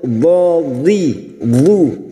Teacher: tepi lidah nempel pada gigi geraham atas, boleh kiri boleh kanan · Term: huruf dhad